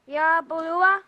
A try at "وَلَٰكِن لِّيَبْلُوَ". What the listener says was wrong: Yeah, and this lam don't have shadda, so we are not joining it with wow. We pronounce wow separate, wa, and then la. Okay, وَلَكِنْ لِيَبْلُوَ.